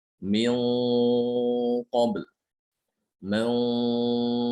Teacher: ketika datang setelah nun itu huruf yang tebal seperti qaf atau shad, maka suara gunahnya itu ikut tebal.